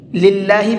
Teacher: اللہ کلام سے پہلے زیر ہوتا ہے تو وہاں پر اللہ کے کلام کو باریک کر کے پڑھتے ہیں